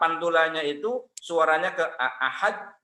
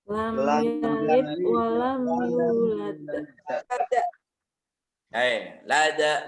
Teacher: huruf dal ketika sukun mati, maka ketika qalqalah memantul